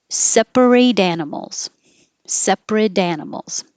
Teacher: if there's a vowel after it you will hear the t connect and it will change to a d